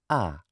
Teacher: this vowel is neither front nor back it lies on the central axis it is an open central unrounded vowel